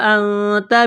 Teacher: نون ساکن کے بعد تا ہے، حروف اخفا ہے، غنہ کریں گے